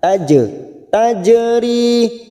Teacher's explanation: jim sukun qalqalah sugroh karena mati asli di tengah kalimat, jangan lupa dipantulkan. Taje, tajeri, ri ada kasrah bertemu ya sukun 2 harokat kita panjangkan.